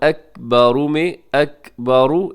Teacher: را ہے اسے آپ نے موٹا پڑھنا ہے کیونکہ را کے اوپر حرکت ہے